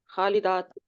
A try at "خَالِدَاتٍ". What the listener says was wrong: خالداتن. اچھا, یہاں پہ پورا ادا کرتے ہیں تاکہ وہ دو زیر کی آواز بھی آئے نا, خالداتن.